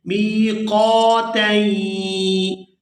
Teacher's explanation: یہاں تنوین کو یائے مشدد کے ساتھ ملائیں گے تو غنہ کریں گے